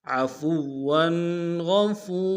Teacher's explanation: را کی تنوین کو الف سے بدل دیں گے